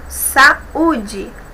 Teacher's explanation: U é a sílaba tônica, saúde, não tem o NH depois, então eu tenho aqui, o acento agudo, tá bom?